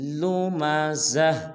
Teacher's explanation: بہت سارے مسلمان پڑھ دیتے ہیں لمزہ، یہ بالکل غلط ہے۔ آخر میں زا کے بعد دیکھیے گا تو چھوٹا سا ہا ہے، وقف میں ہا کو ظاہر کریں گے